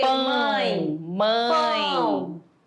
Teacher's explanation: da aquela vibração aqui no nariz né Então aí quando D essa vibração dá uma tremidinha aí eu tenho ditongo nasal